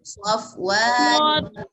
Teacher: واو زبر الف وا، یہاں پر دو چیزیں ہو گئی نا، واو کے ساتھ حرکت بھی ہے اور الف بھی ہے، اس کو ہم ایک الف کے برابر لمبا کریں گے. اگر آپ نے صفوان پر وقفہ کرنا ہے تو 4 الف تک اس کو بڑھا سکتے ہیں، یعنی کہ اس طرح پڑھیں گے وقفے کی صورت میں، مثل صفوان.